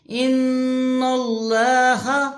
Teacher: نون کی زبر لام کی شد سے ملے گی، اور اوپر کھڑی زبر 1 الف کے برابر کھینچا جائے گا